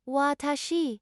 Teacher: Pronounce it watashi with equal emphasis on each syllable.